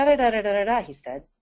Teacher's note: The ai in said may be pronounced as e when stressed. It may be closer to a schwah when it's unstressed.